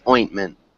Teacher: this T is almost a swallowed T, so we don't really pronounce it